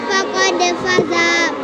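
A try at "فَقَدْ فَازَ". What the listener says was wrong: Faqad faz. Kenapa dipanjangkan za? Kenapa fa-nya dipanjangkan? Karena ada alif. Alif di belakang fa.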